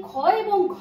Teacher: যখন আমি খ এবং ঘ বলেছি তখন আমার বাতাসের বেগ বা গতি ছিল বেশি, সেক্ষেত্রে সেগুলোর আমি নাম দিয়েছি মহাপ্রাণ ধ্বনি।